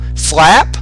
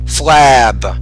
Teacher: if the word ends in a p sound the vowel sound is shorter because the p is a voiceless consonant